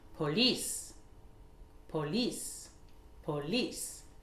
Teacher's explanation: c'est une origine française, donc l'accentuation se fera sur la deuxième syllabe, c'est-à-dire, on va dire police, police, police.